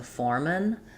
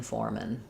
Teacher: the man syllable becomes men because it's unstressed.